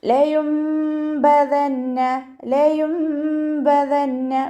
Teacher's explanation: അപ്പം നമ്മളവിടെ നൂനിൻ്റെ സൗണ്ട് കേൾക്കേയില്ല, മീമിൻ്റെ സൗണ്ടാണ് കേൾക്കുക. ഇത് ഈ നിയമത്തിൻ്റെ പേരാണ് ഇഖ്ലാബ് ചെയ്യുക.